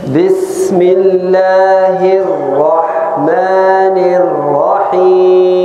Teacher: والسين هذا في صفير بس يستمر الصوت. بسم الله لفظ الجلالة تقرأ بالترقيق بالله في الله.